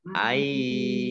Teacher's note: Nun sukun bertemu dengan huruf ya bacaan idgham bi gunnah ya.